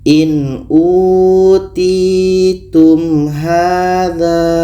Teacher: Ini izhar syafawi, maka mim jelas, ha jelas dan tidak ada dengung